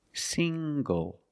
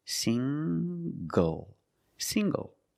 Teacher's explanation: The ng makes the nasal sound plus the hard g.